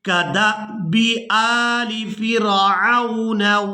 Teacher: कदअबि, अब यहाँ पर आप लोग ये अलिफ देख रहे हैं, इसके ऊपर है जज़म, तो ये अलिफ हमजा के अंदर बदल गया है। दाल को इस हमजा साकिन के साथ मिलाएंगे तो झटके के साथ अदा करेंगे